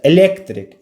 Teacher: elektrik, vurğu ikinci hecanın üzərinə düşür